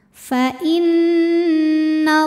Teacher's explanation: Fa inna, ada hukum gunnah musyaddadah karena nun bertasydid. Cara bacanya dengung, bunyi n tahan sampai kerasa ke hidung.